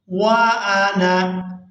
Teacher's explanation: وانا، اب یہاں پر آپ لوگ اس بات کو نوٹ کریں کہ یہاں پر الف جو ہے یہ الف مدہ نہیں ہے، ہم نے نون کو بغیر کھینچے اور بغیر جھٹکے کے ہی ادا کرنا ہے